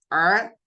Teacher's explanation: پھر اس کے بعد آپ کا آتا ہے عین اور غین، یہ سب سے اوپری حلق کے حصے سے نکلتے ہیں. عین ع، اس میں تھوڑا سا حلق جو سکویز جیسا ہوتا ہے